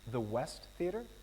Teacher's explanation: listen again to the way the voice goes up at the end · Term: rising intonation